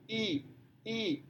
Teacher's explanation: saat mengucapkan I, Anda bisa merasakan bahwa lidah itu bergerak ke atas hampir menyentuh rongga atap mulut.